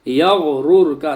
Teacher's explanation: یغرر کا یہاں پر غین بھی پر ہونا ہے اور را بھی پر پڑھی جائے گی، دونوں را پر پڑھی جائیں گی۔